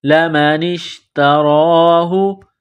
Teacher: نون کو شین کے ساتھ ملانا ہے